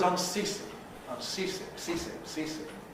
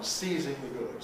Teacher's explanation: We have a difference in the voicing status of the consonant in the middle. Because s into cease is fortis, voiceless.